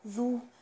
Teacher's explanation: من الحروف اللثوية، لازم أطلع فيه طرف اللسان